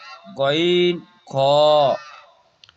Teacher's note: কণ্ঠনালীর উপর থেকে উচ্চারিত হয় গইন খ